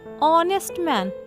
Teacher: Start with O because H is silent.